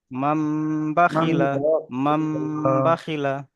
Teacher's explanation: নুনকে মিমের দ্বারা পরিবর্তন করে এক আলিফ গুনা করে পড়তে হয় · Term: ইকলাব